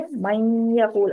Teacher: मैं यक़ूल, मैं यक़ूल, यहाँ पर देखें, मैं यक़ूल, आपकी नाक में आवाज रुकनी चाहिए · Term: गुन्ना